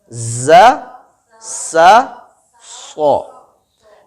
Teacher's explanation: नोक सामने नीचे के दांतों की जड़ें जब आपस में टकराती हैं और सीटी की आवाज के साथ ये 3 हुरूफ पढ़े जाते हैं